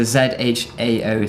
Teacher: this is a zháo second tone version, because it can sound very similar to jiào